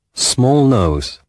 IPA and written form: smɔːl nəʊz (small nose)